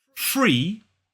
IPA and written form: friː (Free)